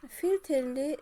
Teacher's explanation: Filtrli sözündə vurğu düşəcək sonuncu hecaya, orbitalda da həmçinin. Deməli, filtrli sözü 2 hecalıdır, orbital sözü 3 hecalı, 2 hecalı, 3 hecalı söz.